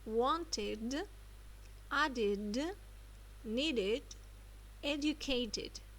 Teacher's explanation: here we will add an extra syllable id